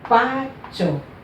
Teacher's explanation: Porque ela tem a penúltima sílaba forte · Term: paroxítona